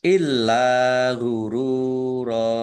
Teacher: dibaca dobel fathah berdiri Mad thi'i panjang dua harakat illa gururo lamnya dibaca dobel ada tasdidnya lam fathah Alif Mad Thobi'i ro dumah wau sukun Mad thi'i